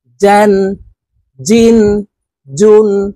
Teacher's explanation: জিম হরফের উচ্চারণ জিহ্বার মধ্যখান থেকে পড়বো